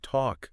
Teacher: a word like talk, that seems simple, but it has that silent L